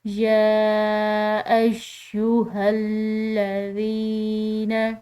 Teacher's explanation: یا کے اوپر کھڑی زبر ہے جس کی وجہ سے ہم نے اس کو کھنچاؤ دیا، اور ساتھ میں اس کے اوپر چھوٹی مد ہے تو مزید کھنچاؤ دیں گے